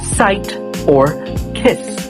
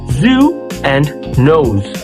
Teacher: The tongue hovers close to the teeth or ridge without fully blocking, creating central turbulence for a steady hiss. Think of the voiceless S in the sound sight or kiss, and the voiced Z in the sound zoo and nose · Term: median fricative